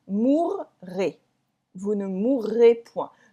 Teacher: So the R is really emphasized here in order to say that it is the future. Okay? Because if you don't, it is the present.